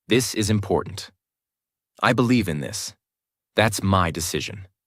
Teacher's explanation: Each time, drop the tone at the end. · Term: downward inflection